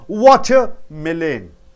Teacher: Water is a noun, melon is a noun. First noun, water should be stressed.